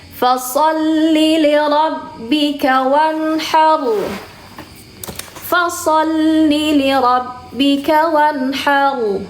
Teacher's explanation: Bukan bukan sekedar fasol aja, fasol aja, tapi pangkal lidahnya harus diangkat. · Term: huruf tebal